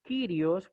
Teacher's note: aquí Rho está en una posición intermedia y tiene el valor de R suave